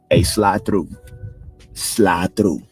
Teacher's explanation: you wouldn't hear the D and the E at the end of the word